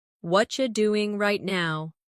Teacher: In natural speech, what are you becomes what you